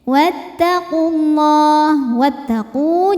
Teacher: Wau sukun. Wau sukun didahului dhammah, maka panjang qof-nya dua harakat. Tapi dibaca panjangnya hanya saat berhenti saja. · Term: mad thobi'i